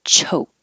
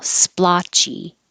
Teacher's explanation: keep the c h voiceless so there's no vibration in ch